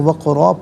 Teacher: وفی آذانہم وقرا، یہاں وقف پڑھیں گے تو وقرا پڑھیں گے، قاف ساکن ہے لیکن حرف قلقلہ ہے تو آواز لوٹتی ہوئی محسوس ہونی چاہیے، را پر 2 زبر کی تنوین ہے تو را کو پر کر کے پڑھیں گے۔